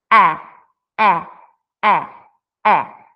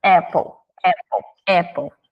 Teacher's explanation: não é o som de e com a boca fechada é o som de abre bem a boca e fala e e esse é o som da letra A no seu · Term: som curto